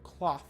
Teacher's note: And again, I always talk about being able to feel the vibrations right here, right? So when you say the word cloth, there's no vibration on the TH.